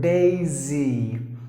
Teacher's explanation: Or if you put your fingers on the Adam's apple, it should not vibrate when you say the S sound. But when you say the Z sound, it should vibrate